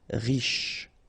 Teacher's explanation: Final E not really pronounced, so sh is the last sound.